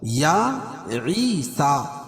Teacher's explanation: یا کھڑا زبر قائم مقام الف مدہ کی، اس کو ایک الف کے برابر کھینچ کے پڑھیں گے۔